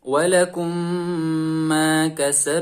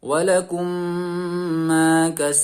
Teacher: seperti Huruf yang bertasydid seperti itu kemudian suara digunakan secara sempurna tiga harokat dengan suara dengung yang keluar dari pangkal hidung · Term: idgham mitslain